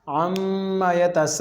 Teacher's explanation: अब यहाँ पर मीम के ऊपर शद आ गई, तो यहाँ पर गुन्ना ज़रूरी है।